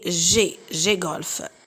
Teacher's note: Consonne, passons à la troisième description. Consonne occlusive, dorso-vélaire, voisée, c'est G